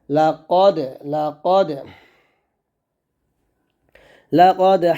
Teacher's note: লাম জবর লা কফ দাল জবর কদ, এখানে অবশ্যই কলকল করতে হবে